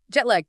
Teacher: Two distinct words stressed pretty evenly.